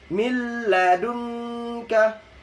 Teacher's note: Apabila nun sukun atau tanwin bertemu dengan huruf lam sama ra, itu idgham bila gunnah yaitu dibaca satu harokat saja tanpa dengung.